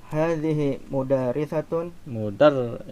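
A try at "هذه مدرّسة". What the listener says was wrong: Mudarrisatun. Ada tasdid di huruf ra ya. Kalau tidak diberikan harokat ya, tulisannya sama persis antara madrasatun dengan mudarrisatun.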